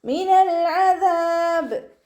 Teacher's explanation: ദാലിൻ്റെ കൂടെ അലിഫ് മദ് വന്നിട്ടുണ്ട്, 2 കൗണ്ട് നീട്ടിക്കൊടുക്കുക